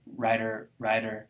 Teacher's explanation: T and D often get neutralized between vowels.